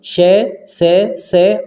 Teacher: इन्हे आप उच्चारण करके देखें तो इनमें क्या है आपका संघर्ष सा फील होगा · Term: उष्म व्यंजन